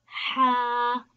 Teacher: Ha originate from the throat, middle or center region.